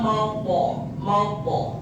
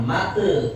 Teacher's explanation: Nih huruf to sukun maupun to yang diwakafkan pantulannya o. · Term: qalqalah